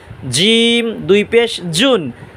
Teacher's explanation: জিম উচ্চারণ হবে জিহ্বার মাঝখান তালুর মাঝখান